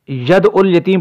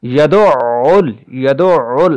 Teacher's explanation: عین چونکہ مشددہ ہے اور عین کی آواز حلق کے درمیان سے ادا ہوتی ہے ، یہاں پر تھوڑا سا ٹھہراؤ ضروری ہے، یدعل، یدعل، عین